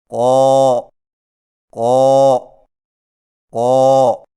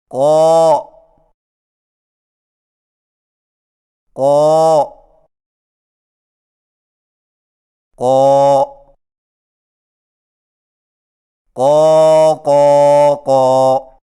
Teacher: قوف کی ادائیگی میں زبان کی جڑ کو کوے کے متصل تالو پر لگا کر موٹی آواز میں پڑھیں، جیسے قو قو قو۔